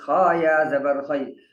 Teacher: یہ یا ہے, اس سے پہلے زبر ہے, تو یہ لین کہلاتا ہے, اس کو کھینچیں گے نہیں